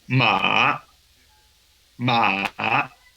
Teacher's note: El tercer tono es descendente, ascendente. Es decir, que bajamos la entonación y luego la subimos.